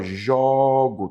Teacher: tá vendo o timbre aberto do ó